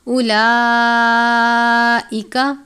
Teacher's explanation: اولئک، لام کے اوپر کھڑی زبر ہے 1 الف، اس کی مقدار ہے، بڑی مد ہے 4 یا 5 الف کے جتنا لمبا کر کے پڑھیں گے